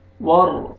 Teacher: را مشدد ہے، را کو پر کر کے پڑھیں گے